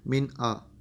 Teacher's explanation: نون ساکن کے بعد حمزہ آ گیا تو یہاں پہ ہم نے اس کو ظاہر کر کے پڑھا، من آ. یہاں پہ نیزل ساؤنڈ کوئی بھی نہیں ہم یہاں پہ کریں گے.